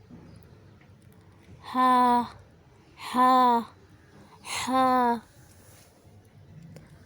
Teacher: حلق کے آخری حصے سے ہا ادا ہوتا ہے، اکسل حلق ہا۔